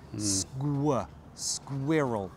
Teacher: It helps if you pronounce the k like a g.